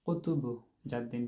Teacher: তো কলকলার হরফগুলো আমরা বলছিলাম যে যখন কলকলার হরফগুলোতে যখন সাকিন অবস্থায় আসে তখন এটা হচ্ছে বাউন্স করে